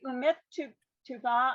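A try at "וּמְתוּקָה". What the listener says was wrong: It's umatuka, I think, because the u is its own standalone, and then the mem has a shva that it doesn't otherwise need. So you have to give the mem a sound. It's a very short sound.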